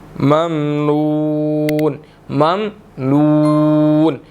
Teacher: نون کے بعد واو مدہ ہے تو یہاں پر ہم نے اس کو 1 سیکنڈ لمبا کرنا ہے